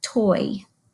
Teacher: boy sound like toy it does it doesn't flow as one when I say toy I actually hear what could be two syllables it's not two syllables but it sounds like it has two parts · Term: diphthongs